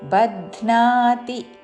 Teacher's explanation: బధ్నా మహాప్రాణాక్షము ధాకి నావత్తుతో.